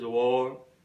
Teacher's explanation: whenever it comes after a vowel, it is not pronounced in RP accent. It is not pronounced simply.